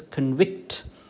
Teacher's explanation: Okay, അവിടെ it falls on the second syllable, കൺവിക്റ്റ്. Okay, con is not stressed, but vict is stressed, so it is convict.